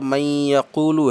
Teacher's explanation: اس میں نون کو یا میں ملایا اور مشدد پڑھا یا کو، من یا، تو پہلا حرف نون جس کو یا میں ملایا تو یہ مدغم ہے، نون مدغم کہلائے گا۔ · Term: ادغام